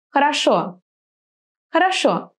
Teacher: So when the O is stressed, it will be clear O. When the O is not stressed, it's going to be something like A. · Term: unstressed O